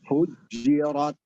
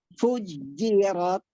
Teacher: Fujirat keluar dari tengah lidah. Jangan fujjirat dari ujung lidah.